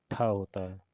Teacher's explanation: ठ मूर्धन्य भी है महाप्राण भी अघोष भी है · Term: मूर्धन्य महाप्राण अघोष